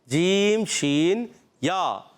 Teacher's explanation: جیم جو ادا ہوتا ہے وسط زبان وسط تالو سے، زبان کا درمیان اور تالو کا درمیان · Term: عرف شجریہ